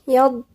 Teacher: الضاد من عند مخرج الأضراس مفخم يض، ونعلق لساننا لأنه هو ساكن فهيحصل فيه قلقلة.